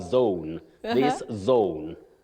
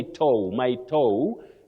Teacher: what we call a slight vowel glide